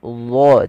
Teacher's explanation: Dha, tebalkan huruf dha. Dalam melafalkan ujung lidah menempel dengan gigi dari atas, pangkal lidah terangkat sehingga menebal suara dha-nya.